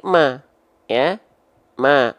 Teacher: dia dibaca dengan vokal a maka mimnya bukan termasuk ke dalam huruf yang tebal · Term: huruf yang tipis